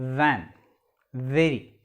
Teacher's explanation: the lower lip approaching the upper row of teeth this a fricative sound